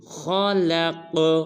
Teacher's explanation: خا کو پر ادا کریں گے، قاف کو قلقلہ کریں گے